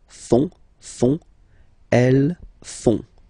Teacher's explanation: And ils, plural, font, final T not pronounced